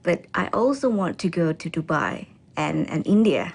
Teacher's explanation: She then lists the countries with her voice pitch rising until she ends with a level voice for Dubai. She uses a rising intonation to express the afterthought, India.